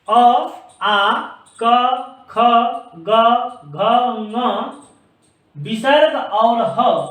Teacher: इनको हम मुख के कंठ भाग से बोलते हैं। तो हम इसको कंठ वर्ण, कंठ भी कहते हैं और कंठ वर्ण भी कहते हैं।